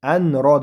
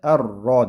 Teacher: Hop, endi adan keyin bu hamzadan keyin bu yerda nun bor, harakatsiz nun va nundan keyin esa ro harfi bor. Mana shu nunni roni ichiga kirgizib roga aylantirib yuboramiz.